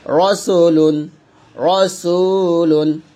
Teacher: আলিফটা আসার কারণে রটা মোটা হয়ে গেছে